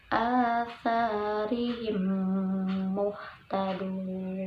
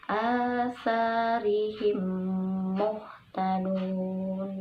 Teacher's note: Hukum bacaannya adalah idgham mimi atau idgham mutamasilain ya, karena mim mati bertemu dengan huruf mim, dibacanya dimasukkan